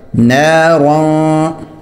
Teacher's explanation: نون الف زبر نا، را دو زبر رن، را موٹا ہوگا نارن، اور را پر اخفا بھی ہوگا اس تنوین پر نارن، اور دو زبر جو ہے وہ وقف کی صورت میں الف بن جاتی ہے، اس وجہ سے اس کے آگے الف لکھا بھی ہوتا ہے وقفن نارا۔